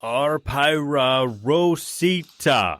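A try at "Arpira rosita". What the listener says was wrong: Not pyra. The pronunciation is pira.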